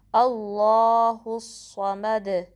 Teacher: گے، اور میم پہ فتحہ ہے، پھر ایک حرکت پڑھیں گے، اور دال پہ جب ہم ساکن کریں گے تو کلکلا کریں گے، یعنی کہ آواز پلٹ کر واپس آئے گی،